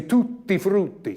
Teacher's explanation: when I have to do a double consonant, the Italians take time to do it